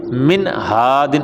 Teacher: اس لیے کہ یہ نون ساکن ہے اور اس کے بعد ہا آ گیا ہے، اور انہوں نے بھی یہی بتایا ہے کہ نون ساکن کے بعد ہا آ جائے یعنی حلقی میں سے کوئی حرف آ جائے تو غنہ نہیں کریں گے